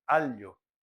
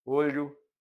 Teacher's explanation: Se você vai falar L, por exemplo, alho, onde a língua encosta no céu da boca, não vai sair o ar, vai sair pelas laterais